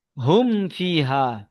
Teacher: মিম সাকিনের পরে ফা এসেছে, তাই মিমকে বিনা গুণনায় জাহির করে পড়তে হবে। · সাফাবি, সাফাবি, সাফাতুন মানে ঠোঁট আরবিতে। তো মিমটা দুই ঠোঁটের সাথে মিলে উচ্চারণ হয়। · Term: ইজহারে সাফাবি